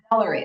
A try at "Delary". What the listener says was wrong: like Valerie, but with the D and spelled differently, but it kind of sounds the same.